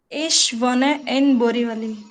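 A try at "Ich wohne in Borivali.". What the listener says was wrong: Okay, very nice.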